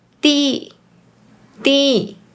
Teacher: in Malaysian Mandarin, people tend to just pronounce the “一” with the fourth tone.